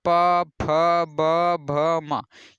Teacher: तो इसमें आपको लग रहा होगा कि आपके ओठ का प्रयोग हो रहा है, तो इसे यानी इसका उच्चारण स्थान ओष्ठ की सहायता से किया जाता है।